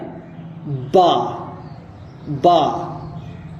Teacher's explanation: दोनों होठों की जो तरी वाला हिस्सा है खुश्की वाले हिस्से के पीछे जो तरी वाला हिस्सा है उन दोनों को मिलाया जाए